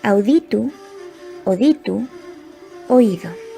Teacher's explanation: El diptongo au se simplifica en o.